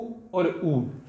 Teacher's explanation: बाहर के होंठों जब बोल रहे हैं हम तो गोल हो रहे हैं